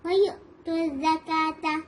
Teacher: واو نہیں پڑھیں گے اس کو, ہم حمزہ کی ساؤنڈ آئے گی, جرکنگ ساؤنڈ آئے گی